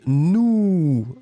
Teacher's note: c'était Nou, hein, qui est beaucoup plus rond